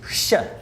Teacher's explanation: these became palato-alveolar spirants